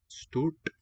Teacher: you'll curl the tongue. They will telescope into a single segment. Stort is a retroflex.